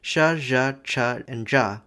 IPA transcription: ʂ ʐ ʈʂ ɖʐ